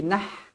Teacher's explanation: Pastikan ha pedas di sini. Jangan dibaca dengan ha simpul, tak nak. Ha pedas.